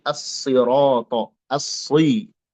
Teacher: Yang jelas huruf sad itu huruf yang tebal pada semua kondisi, termasuk kasroh